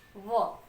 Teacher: व दांत से थोड़ी जीभ स्पर्श कर रही है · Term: दंतोष्ठम